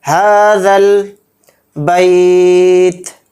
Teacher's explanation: ہا کو یہاں پر تھوڑا کھینچیں گے اور زال کے لام میں ملا کر پڑھیں گے